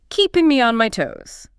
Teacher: Remember, the stress is on toes.